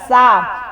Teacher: سین کو پتلا کر کے پڑھنا ہے، موٹا نہیں پڑھنا